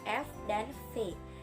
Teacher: bibir bawah sebagai artikulator menyentuh gigi atas sebagai titik artikulasi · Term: bunyi labiodental